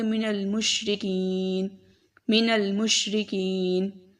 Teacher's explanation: اور اس سے پہلے جو ہے ہمارے پاس یا مدہ کا قاعدہ بھی ہے کہ یا کے نیچے یا ساکن ہے اور اس سے پہلے زیر ہے، تو اس کا لمبا بھی کریں گے اور اگلے حرف کو ساکن کر دیا وقف کرتے ہوئے. تو اسے ایسے پڑھیں گے من المشرکین، من المشرکین.